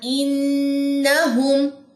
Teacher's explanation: نون مشدد کا غنہ کرنے کے بعد نون کی زبر لمبی نہیں کرنی